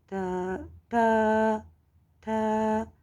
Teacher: مسوڑوں کے ساتھ ہم زبان کی نوک لگا دیتے ہیں اور جڑوں کے ساتھ نہیں لگاتے، یعنی نرمی کے ساتھ تو پھر تا کی ادائیگی صحیح نہیں ہوگی.